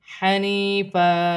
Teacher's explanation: وقف کی صورت میں دو زبر کی تنوین ایک الف مدہ میں بدل جائے گی۔